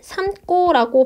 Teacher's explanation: 이때 고가 꼬가 되는 건 앞에 있는 미음 때문에 고가 꼬가 되는데요. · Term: 된소리